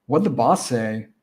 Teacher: boss ends in S, say starts in S. So we just push those S sounds together